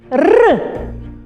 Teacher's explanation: вимовляється коротко відривиста вірна і це твердий приголосний